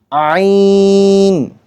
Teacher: আইন বলার সময় আমরা তিন আলিফ পরিমাণ টানবো